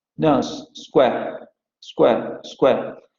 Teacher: Tenemos que en la variante de estándar, vamos a decirlo así, la palabra es esta vocal con la vocal semiabierta anterior no labializada, square. Pero en Lancashire vamos a tener que square se va a pronunciar con la vocal con que se pronuncia nose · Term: convergencia